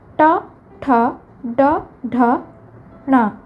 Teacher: ଏମାନେ ମୂର୍ଦ୍ଧାରୁ ଉଚ୍ଚାରିତ ତେଣୁ ଏଗୁଡ଼ିକୁ ମୂର୍ଦ୍ଧନ୍ୟ ବର୍ଣ୍ଣ କହନ୍ତି।